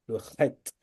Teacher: Le het en hébreu, c'est une lettre gutturale. Donc ça fait appel, vous raclez votre gorge.